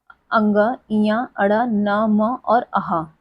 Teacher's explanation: जब हम इन ध्वनियों को उच्चारित करते हैं तो हमारे नाक पर अधिक जोर पड़ता है। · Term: नासिका